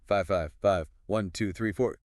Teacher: That falling tone at the end tells the listener the number is finished.